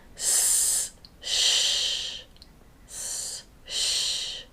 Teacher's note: The tip of the tongue changes from being pointed at the front of the mouth to flatter towards the back of the mouth, making a wider tunnel for the air to pass through.